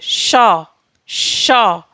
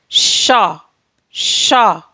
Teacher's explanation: तालु और जीभ में घर्षण के कारण हमारा वर्ण शा उत्पन्न होता है।